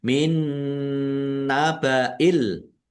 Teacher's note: nun sukun bertemu dengan huruf nun. Bacaan idgham bi ghunah. Masuk dengan mendengung. Yaitu mendengung nun ditandai nunnya ada tasdidnya. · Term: idgham bi gunnah